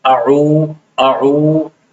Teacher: عین کے ساتھ چونکہ وہ مدہ بھی ہے تو اس کو کھینچنا ہے · وسط حلق یعنی حلق کے درمیانی حصے سے عین ادا ہوتا ہے